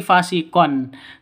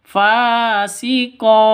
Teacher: maka ketika waqaf tanwinnya berubah menjadi fathah panjang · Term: mad iwad